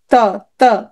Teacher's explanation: দন্ত দাঁতে লাগে দেখো ত দাঁতে লাগতেছে